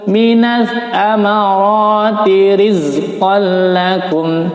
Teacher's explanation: tanwin bertemu lam, hukumnya adalah idgham bila gunnah ya. Idgham bila gunnah dimasukkan atau dileburkan bunyi tanwin atau nun sukun ke dalam huruf idgham bila gunnah, dalam hal ini huruf lam, tanpa didengung.